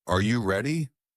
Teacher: Rising intonation, used for yes, no questions.